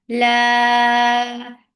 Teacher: 4 counts long. La, and it should not go into your nose.